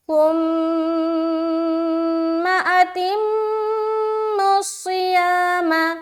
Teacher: صاد کو موٹا رکھیں گے کیونکہ صاد موٹے حروف میں سے ایک ہے